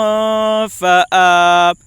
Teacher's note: حمزہ کے اوپر کھڑا زبر ہے، کھڑا زبر برابر ہوتا ہے الف مدہ کے، اس لیے کھڑا زبر کو ایک الف کے برابر کھینچ کر پڑھیں